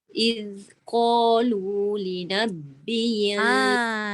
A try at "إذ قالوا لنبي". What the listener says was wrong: Sabdu. Dia bukan dekat ba. Dia dekat ya. Li nabiyil. Maknanya tekan dekat ya.